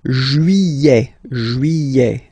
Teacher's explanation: Don't pronounce this final T, E-T here at the end.